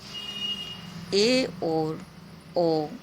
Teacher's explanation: जब मुख द्वार अर्ध संकुचित होता है तो उस समय जो स्वर निकलते हैं उन्हें अर्धसंवृत स्वर कहते हैं। नाम से ही पता चल रहा है, ए और ओ स्वर इस प्रकार के होते हैं।